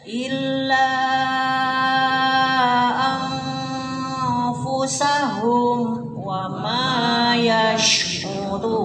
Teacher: Humnya itu dengan jelas, tidak dengung tapi tidak loncat. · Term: idhar syafawi